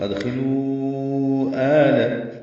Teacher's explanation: اب دال ساکن پہ قلقلہ ہے، خاء پر ہے، خی پڑھیں گے، ادخلوا واو مدہ ہے اور اس کے بعد حمزہ آنے کی وجہ سے مد منفصل. ادخلوا آل، آ مد بدل ہے، دو حرکات لمبا کریں گے، لام باریک.